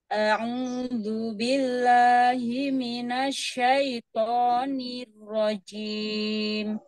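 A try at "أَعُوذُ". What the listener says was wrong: O-nya sempurnakan ya. A-U. Domahnya sempurnakan.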